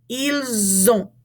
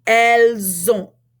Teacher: we're going to take the S that usually isn't pronounced, and we're going to cause it to be a Z sound in front of this O